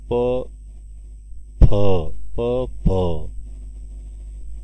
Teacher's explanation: ओष्ठ व्यंजन वर्ण आहे, महाप्राण मिश्रित व्यंजन वर्ण, यासाठी की प मध्ये ह मिसळ